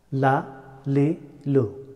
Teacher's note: the letter of LOM pronounced from edge of the tongue touching upper hard palate